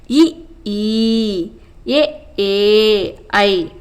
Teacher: வாயை திறத்தல் மற்றும் நாக்கின் அடி ஓரமானது மேல்வாய் பல்லை பொருந்துவதால் தோன்றும் உயிரெழுத்துக்கள்